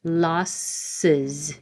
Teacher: And with voicing, j, j. So these you have to move your tongue down and back up again, and it creates the extra syllable uz.